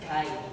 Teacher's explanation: So kite is unrounded. And its advancement is in the front area.